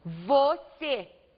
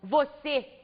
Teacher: você última sílaba a sílaba mais forte oxítona vamos acentuar a vogal mais forte também vamos acentuar as